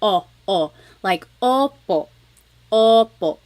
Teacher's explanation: like having a ball in your mouth your tongue gets kind of pushed back and down a little bit and the inside of your mouth is open and wide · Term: letter O